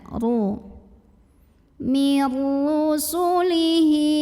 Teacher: ro dibunyikan secara tafkhim karena ro-nya berbaris dhammah. Maka bacanya tebal, pangkal lidah dinaikkan.